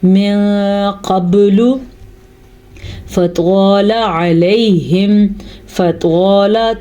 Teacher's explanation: توا کو پر پڑھنا ہے کیونکہ قاف توا یہ دونوں ہمیشہ ہی پر پڑھے جاتے ہیں، ان کو باریک نہیں پڑھ سکتے. اور فا زبر فا، یہ پڑی زبر ہے لیکن توا زبر الف، توا یہ الف مدہ کے ساتھ ہے، اسے ہم کھینچ کے پڑھیں گے.